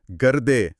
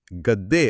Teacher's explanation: ಹಳೆಗನ್ನಡದಲ್ಲಿ ಗರ್ದೆ ಅಂತ ಇತ್ತು ಹಾ ಅದು ಈಗಿನ ಕನ್ನಡದಲ್ಲಿ ಗದ್ದೆ ಅಂತ ಆಗಿದೆ ಅಲ್ಲಿ ಆ ರನ್ನೋ ಧ್ವನಿ ಪಕ್ಕದಲ್ಲಿದ್ದ ದ ಧ್ವನಿಯ ಪ್ರಭಾವದಿಂದ ತಾನು ದ ಆಗಿ ಬದಲಾಗಿದೆ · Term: ಸಮರೂಪ ಧಾರಣೆ